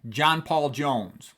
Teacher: three stressed syllables in a row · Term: 3 stressed syllables